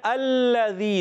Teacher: لام تو اندر سے دانتوں کی جڑ کے اوپر جو تالو کا حصہ ہے، وہاں جب زبان کا کنارہ لگتا ہے تو ادا ہوتا ہے لام